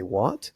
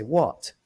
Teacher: an exclamation and a question with a rising tone in English